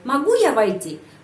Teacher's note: Penekanan intonasi berada pada kata могу.